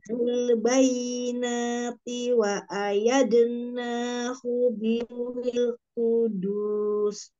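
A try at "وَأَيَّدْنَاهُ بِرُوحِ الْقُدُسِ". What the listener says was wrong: Wa ayyad. Wa ay ditekan. Wa ayyad. Biruhil kudus. ayyad. Wa ayyad. Biruhil kudus.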